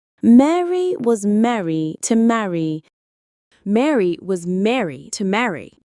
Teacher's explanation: Mary, marry, Mary. But in American English, all three vowels have merged, so all three words are pronounced the same